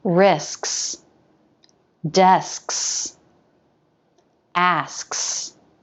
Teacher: is the same except we move the back of the tongue the front of the tongue is in position for the s then the back of the tongue lifts and that cuts off the airflow